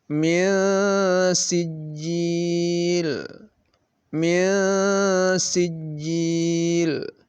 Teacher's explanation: Nun sukunnya dibaca samar, lalu didengungkan 2 harakat.